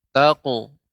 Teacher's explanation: Qafnya lebih dalam lagi Ibu. Taqhar itu, kalau taqhar itu qafnya belum tebal ya.